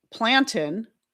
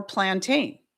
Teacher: It's really kind of all about where you put the emphasis and whether or not you make that second syllable a long a sound.